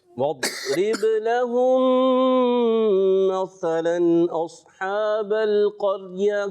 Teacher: दौद में कलकले से आपने बचाना है। वद्रिब, बा में कलकला।